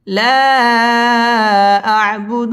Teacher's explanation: লা মধ্যে মুনফাসিল 3 আলিফ টান দিয়ে পড়তে হবে